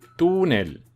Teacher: tú es la sílaba tónica es una palabra llana porque porque la sílaba tónica tú está en penúltimo lugar